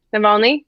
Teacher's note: The accent is on the middle syllable.